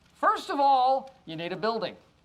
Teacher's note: links all three words together with a reduction on of